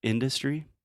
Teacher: So industry, the stress is first on the first syllable, industry. And the second syllable is the schwa, in duh.